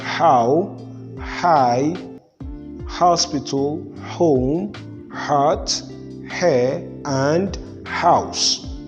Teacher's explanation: this sound is known as the voiced glottal fricative